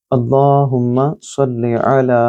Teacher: اللہم صلی علی، یہاں دیکھیے اللہ کا نام ہے، اس سے پہلے زبر ہے تو آپ نے اس کو لام کو تھوڑا پر پڑھنا ہے، موٹا پڑھنا ہے